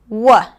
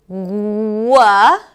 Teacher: the consonant is really produced in the back of the mouth, right? As the back of the tongue goes up, but it's not blocking the air completely. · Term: W sound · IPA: /w/